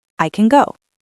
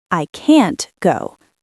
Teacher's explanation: The difference is the length and the vowel quality. Positive, I can go. Short, weak. Negative, I can't go. Long, strong. · the difference is not the T sound. The difference is the length and the vowel quality.